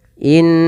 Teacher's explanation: tahan suara nunnya bacaan gunah